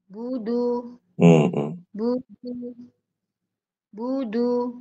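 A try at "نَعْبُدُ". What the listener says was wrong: Nah, Ibu saat baca bu, jangan budu, budu, budu, bunya langsung monyong, jangan. Tapi biasa dulu. Bu, budu, gitu.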